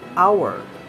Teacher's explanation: a careful pronunciation of word hour begins with a vowel quality similar to ah goes on to a glide towards the back close rounded area then ends with the mid central vowel schwa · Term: triphthong